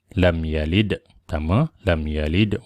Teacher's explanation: Qolqolah Sugro cara bacaan bunyi lantunan yang rendah saja kenapa rendah Kenapa karena huruf Qalqalah berada dipertengahan lam yalid sama